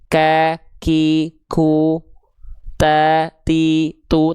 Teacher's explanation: Jadi huruf ta dan kaf itu ketika dilafalkan dia ada percikan nafasnya.